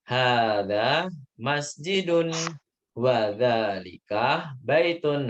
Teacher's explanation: di sini kan nggak ada pertanyaan. Jadi nadanya turun semua.